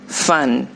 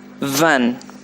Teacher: you notice the difference fun van the movement of the mouth the position of the teeth on your lips and your tongue is the same but there's one difference the vocal cords are vibrating